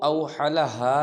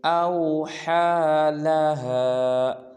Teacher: ہا کے اوپر کھڑا زبر ہے، اس کو ایک الف مقدار لمبا کریں گے اور پڑھیں گے اوحی لہا۔